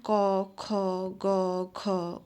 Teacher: যেসব ধ্বনি উচ্চারণ করবার সময় শ্বাস বায়ু কন্ঠনালীর উপরি ভাগ বা জিহামূলে বাধা প্রাপ্ত হয়ে উচ্চারিত হয় তাকে কন্ঠ ব্যঞ্জন ধ্বনি বলে